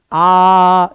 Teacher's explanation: जिनके उच्चारण में मुख पूरा खुलता है उनको क्या कहते हैं लाला? उनको कहा जाता है आपका विवृत्त स्वर